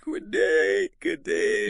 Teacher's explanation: Conversely, sounds can be dropped when words link, especially consonants. The D in good day might disappear.